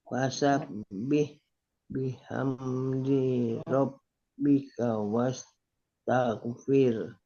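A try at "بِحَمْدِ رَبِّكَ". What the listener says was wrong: Bihamdi nya jangan panjang. Bihamdi rob, bihamdi rob.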